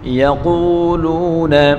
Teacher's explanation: قاف کو پر پڑھیں گے اور واو مدہ ہے، ایک الف کی مقدار کھینچ کر پڑھیں گے